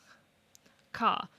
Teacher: So it's being pronounced with the tongue up against the velar region. Towards the soft palate. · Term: broad consonant